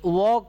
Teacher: और वह एक ऐसा एकलौता वर्ण है जिसके उच्चारण में दंत और ओष्ठ दोनों का मेल होता है, यानी व का उच्चारण स्थान जो होता है दांत के बाहरी भाग और ओष्ठ के भीतरी भाग, यानी दांत के बाहरी भाग और ओष्ठ के भीतरी भाग का जो गैप का स्थान होता है उसको हम उसके माध्यम से व वर्ण का उच्चारण किया जाता है।